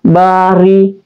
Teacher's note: Kemudian ada ba asyafatain, ada alif berdiri, dia juga mat tabi', jadi dibaca panjang juga 2 harakat. Ba, ra adalah huruf berbaris di bawah, berarti dia adalah ra yang tarkik, dibaca tipis.